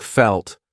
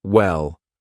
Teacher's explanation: dark L's come before a consonant, so like felt, or at the end of a word, so like well